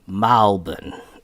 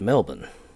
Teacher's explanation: You see how the EL becomes more of an AL.